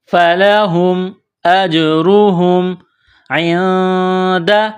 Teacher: نون ساکن کے بعد دال ہے، حروف اخفا ہے تو آواز ناک میں چھپائیں گے. اس ناک میں آواز چھپانے کو اخفا کہتے ہیں.